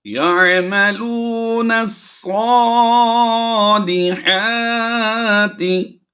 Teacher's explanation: نون کو ہم نے صاد کے ساتھ ملانا ہے، الف اور لام دونوں ہم نے سائلنٹ کرنے ہیں، ان کی آواز نہیں دیں گے